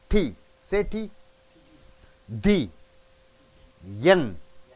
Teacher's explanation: the tip of the tongue goes into the same place to produce the sound, right? So, T changes into D.